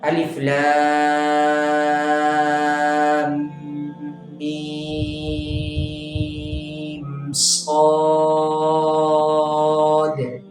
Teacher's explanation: ठीक है, अलिफ लाम मीम साद। ठीक है, और दाल के ऊपर हम कलकला करेंगे। ठीक है, क्योंकि दाल जो है वो साकिन है और रफ़े कलकला में से है।